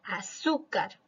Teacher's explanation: Luego tenemos la palabra azúcar, que tiene la mayor fuerza de voz en la sílaba su. Por lo tanto, sí es una palabra grave. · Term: sílaba tónica